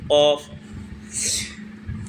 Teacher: اوپر کے تالو نرم والے حصے سے مل کر کے قاف ادا ہوتا ہے